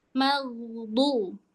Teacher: Jangan magdu. Maghdu sambil ngangkat pangkal lidah. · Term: go-nya tebel